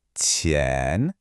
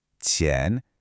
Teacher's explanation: Listen closely to the tone. It rises up